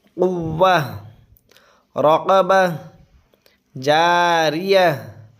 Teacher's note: یہ تائے مدورہ ہے، یہاں پہ رکیں گے تو یہ ہا بن جائے گا